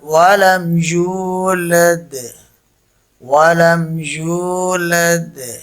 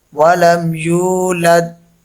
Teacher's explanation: That echo sound at the end is qalqala.